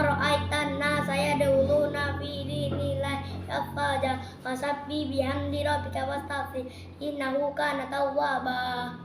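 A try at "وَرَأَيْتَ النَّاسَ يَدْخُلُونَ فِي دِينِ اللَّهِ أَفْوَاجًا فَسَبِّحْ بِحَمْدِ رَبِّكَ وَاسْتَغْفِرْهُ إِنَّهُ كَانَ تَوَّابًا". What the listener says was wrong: Akan mengulas sedikit tadi, untuk pelafalan pembacaannya itu harus lebih jelas lagi ya. Jangan sampai yang ain itu alif itu bersama pengucapannya dengan ain. Kalau alif itu a, kalau ain itu ain gitu ya.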